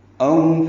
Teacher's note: او واولین ہیں ہونٹوں کی گولائی سے ادا کریں گے